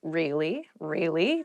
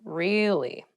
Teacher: show that you're not so interested in the conversation with downward intonation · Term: upward intonation